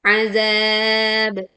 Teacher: dengan memantulkan ba sukun dengan suara yang kuat.